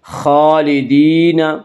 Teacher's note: کھڑا زبر کو ایک الف کے برابر کھینچ کر پڑھیں گے۔ خالدین، یا مدہ وہ یا جو ساکن ہو اور اس سے پہلے زیر ہو، یا مدہ کو ایک الف کے برابر کھینچ کر پڑھیں گے۔